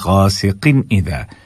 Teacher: بالکل وہی وجہ ہے جو ہم نے کفوا احد میں کہا تھا کہ تنوین کے بعد کیا ہو رہا ہے، حلق سے ادا ہونے والے حروف میں سے ایک حرف یعنی کہ حمزہ آ رہا ہے، تو یہاں پر بھی حمزہ ہے اور اس سے پہلے 2 زیر ہے یعنی کہ تنوین ہے، تو ہم اس کو ظاہر کر کے پڑھیں گے